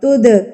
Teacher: दाल सुकून है। दाल जो है वो सुकून की हालत में है। ठीक है? तो इस पर हम कलकला करेंगे।